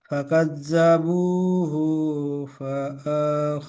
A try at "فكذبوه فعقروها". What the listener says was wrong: ফাটা টান দেবেন না, করুহা। যেটা টান আছে সেটা টানবেন, ঠিক আছে।